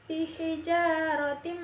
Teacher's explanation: Tanwin bertemu dengan mim dibaca masuk dengan dengung, ditahan 3 harokat. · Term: idgham bihunnah